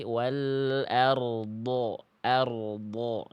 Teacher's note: Jadi ada getaran huruf ro dulu. Rnya getarannya jangan sampai samar ya.